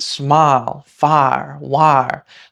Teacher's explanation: if you were to say it in a stereotypical Southern accent, smile, fire, wire, I absolutely agree that those are one syllable each